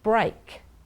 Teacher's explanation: there are two breaks in airflow one at the beginning of the word with the B and one at the end of the word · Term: stop consonants